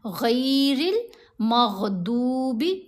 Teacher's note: غین اور ضاد دونوں کی آوازوں کو پر پڑھیں گے، موٹا پڑھیں گے